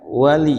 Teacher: jangan kepanjangan ya wali ya pendek jangan di jangan seolah-olah ada ya matinya